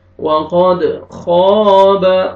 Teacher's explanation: خا کو موٹا کر کے پڑھیں گے اور کھینچنا ہے الف سے پہلے فتحہ، ٹھیک ہے، الف مدہ۔